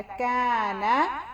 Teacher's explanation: کاف زبر الف کا، کاف کو تھوڑا لمبا کیونکہ الف کے ساتھ ہے اور کاف پتلا. نون زبر نا، نون کو بھی پتلا ہے.